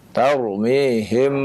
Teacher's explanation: huruf mim dan huruf ba itu sama-sama dari kedua bibir